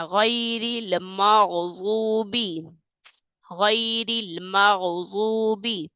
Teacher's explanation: ضاد کو موٹا کر کے پڑھنا ہے، غین کو موٹا کر کے پڑھنا ہے